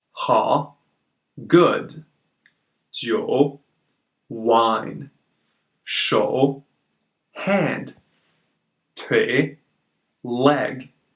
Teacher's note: this is a very melodic tone as it moves in two directions it starts slow and goes down to even lower pitch and then rises up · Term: third tone